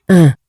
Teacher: that's a nasal epsilon